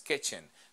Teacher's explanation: como está en una sílaba acentuada, la pronunciamos como E